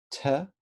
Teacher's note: an unvocalized apico alveolar plosive